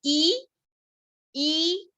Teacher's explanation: You can see माई जीभ has gone up. आ नीचे, ई ऊपर।